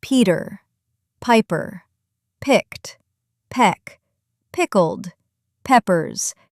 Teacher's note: The only difference B has a voice. B P has no voice, just a little pop of air